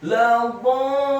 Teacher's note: Rubahnya dibaca tafkhim, tebal dengan posisi bibir bawah kita agak tertutup dan posisi lidah kita di langit-langit atas. Dibaca tafkhim, tebal fathah 4 sampai 6 harokat.